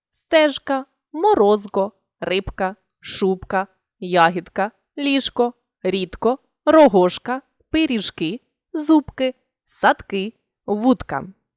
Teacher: сумнівний приголосний у цих словах не уподібнюється до глухого і у вимові дзвінкий звук залишається дзвінким тому і позначаємо це відповідною літерою на письмі наступна група слів